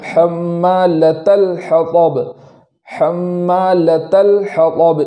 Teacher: پہلا تو یہ کہ لام پر جو جزم ہے وہ متحرک نہ ہو جائے